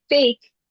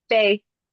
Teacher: it's a deletion of a final consonant